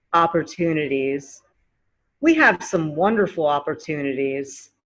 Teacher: it's at the end of the word where the t turns to a d sound